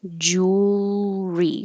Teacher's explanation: You can make it three syllables if you want jewelry, but the middle one gets dropped and we just make it simple two.